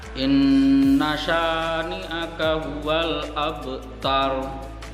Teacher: Abtar di situ baknya berharokat sukun dan dia harus dipantulkan. Pantulannya ringan saja karena qalqalah sughra.